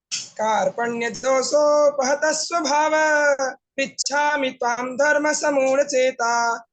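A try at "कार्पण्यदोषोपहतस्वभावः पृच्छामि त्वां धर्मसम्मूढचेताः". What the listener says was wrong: बेटा छंद बिगड़ गया गाने में, है ना। कार्पण्य दोषोपहत स्वभावः पृच्छामि त्वां धर्म समूढ़ चेतः यत् श्रेयस्यान्निश्चितं ब्रूहि तन्मे शिष्यस्ते हम शाधि माम त्वाम प्रपन्नम।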